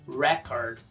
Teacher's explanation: O substantivo registro ou record, em inglês, record. Tônica na primeira, record. Já o verbo é igual, mas pronuncia record. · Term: sílaba tônica